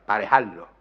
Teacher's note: Fonéticamente registra la aspiración de J nuevamente y la asimilación de la R a la lateral, a la L posterior, produciendo en última instancia una geminación, una duplicación de esta, parejarlo.